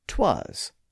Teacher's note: they dropped the initial I in the pronoun it and produced the contraction "'twas," like in the line, "'Twas the night before Christmas" in the poem called A Visit from St.